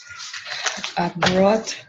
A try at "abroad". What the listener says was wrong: No, oh, abroad. Con B, no con D, con B. Okay, abroad.